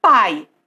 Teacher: O A na sílaba, ele é a vogal. E o I vai ser a semivogal. Então, A vogal, semivogal, mais forte para o mais fraco, decrescente. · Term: ditongo decrescente